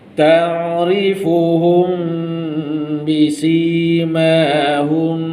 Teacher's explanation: Mim kosong jumpa ba, dengungkan.